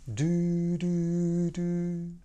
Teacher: Note the little audible click that occurs. This is what you want to look for. · you want the tip of your tongue touching the so-called alveolar ridge very lightly, somewhere behind your front teeth. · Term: D sound